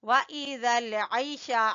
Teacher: عین کو وسط حلق سے نکالیں گے